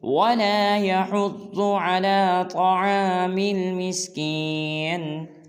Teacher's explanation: عَلَى، بعض لوگ اس کو پڑھ دیتے ہیں إِلَى، یہ لفظ ہے عَلَى طعام مسکین، مسکین۔ وَلَا يَحُضُّ میں ضاد کو موٹا کریں گے اور طعام میں طا کو پر ادا کریں گے